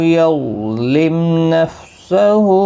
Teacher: میم ساکن کے بعد نون آئے اظہار شفوی ہوگا، غنہ نہیں کریں گے